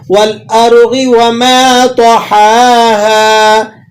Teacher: والارض وما طحاها، طا جو ہے موٹے حروفوں میں سے ہے، اور ہا اور ہا دونوں اکٹھے ہو رہے ہیں، تو اس لیے دونوں کو اپنے اپنے مخرج سے آپ نے ادا کرنا ہے